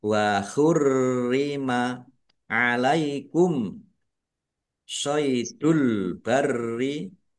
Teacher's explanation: Waurrima rnya ada tasdidnya dibaca dobel ditekan dan ditahan biar tampak dobel wurrima alaikum shidul barri. Mim sukun bertemu dengan huruf shad. Bacaan izhar syafawi dibaca jelas. Albarri alif lam qamariah ditandai lamnya dibaca sukun.